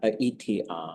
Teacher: write those with a glottal because it seems to attach right to the thing before it with a slight little gap